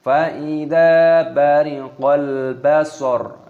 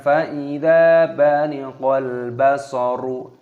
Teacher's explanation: Perhatikan, zalnya di sini panjangkan, ada tanda alifnya, matabi'i, dipanjangkan dua ketukan, bariqal, alif lam qamariyah, ini dibaca bariqal. Basar, ketika berhenti waqaf maka roknya yang berharokat dhammah ini maka dimatikan, bukan dibaca basoru.